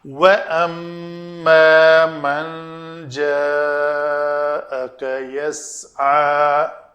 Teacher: تجوید کے قواعد کے مطابق میم جب بھی مشدد آئے غنہ کریں گے، 2 حرکت کے برابر ٹائم دیں گے۔ واو کے لیے دونوں ہونٹ گول کریں گے